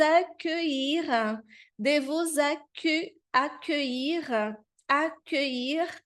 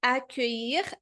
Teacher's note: ILL tem esse som de I, esse sonzinho do I um pouquinho mais prolongado.